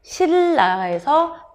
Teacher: 니은이 뒤에 오는 리을과 만나서 리을로 바뀌는 거는 유음화죠.